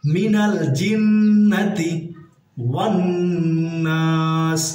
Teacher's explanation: নাল, জিন্নাতি, জিমের নিচে হরকত, নুনের উপরে তাসদিদ আছে, আমরা জানি এখানে ওয়াজিব গুন্না হবে, কারণ হরকতের বামে নুনে তাসদিদ।